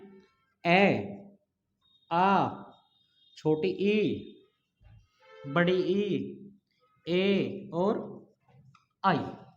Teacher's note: इन स्वरों के उच्चारण में होठ गोलाकार स्थिति नहीं बनाते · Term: अवर्तमुखी स्वर